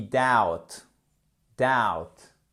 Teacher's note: Le B devient silencieux, notamment lorsqu'il est suivi du T at the end of words. OK? À la fin des mots.